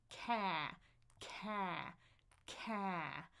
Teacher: Tongue is in the front, and my jaw is very far open. Ca. Feel how before that sound, I've got the K.